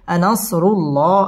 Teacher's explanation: আল্লাহ শব্দের লাম পুর হবে এবং ল এক আলিফ টেনে পড়তে হবে।